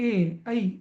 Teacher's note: ए, ऐ हवा कंठाला पण लागते आणि टाळूला पण लागते